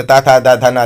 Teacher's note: त वर्ग इसे दंत ता था दा धा ना, दंत का प्रयोग होता है।